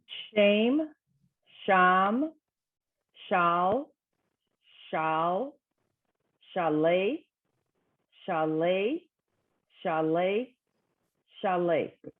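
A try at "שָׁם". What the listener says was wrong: Perfect. Wonderful. Thank you.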